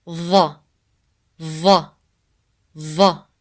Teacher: when you pronounce the sound of lo, you put more than the tip of the tongue between your teeth.